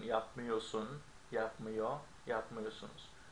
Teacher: sometimes we don't pronounce the R, which happens in yapmıyorsun, yapmıyor, yapmıyorsunuz